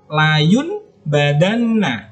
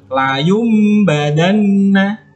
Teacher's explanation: Contohnya di sini, nun sukun bertemu dengan ba. Maka nun mati atau nun sukun atau tanwin itu bunyinya dirubah menjadi huruf mim. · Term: iqlab